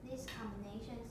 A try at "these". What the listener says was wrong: These. Make it longer.